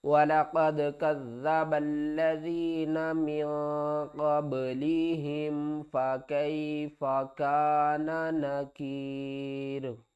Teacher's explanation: وقف کی صورت میں را کے نیچے جو زیر ہے یہ ختم ہو جائے گی